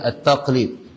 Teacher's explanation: Lam hujung lidah, qaf ni kat pangkal lidah. Jadi pangkal nak ke hujung ni dia berat.